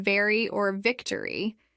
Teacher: To say the V sound in very or victory, your top teeth should touch your bottom lip as you vibrate your vocal cords.